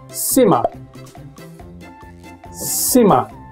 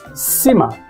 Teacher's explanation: Simmer contains two syllables with stress on the first syllable.